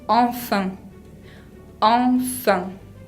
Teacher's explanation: Enfin suena como una A nasal, pero se escribe E con N.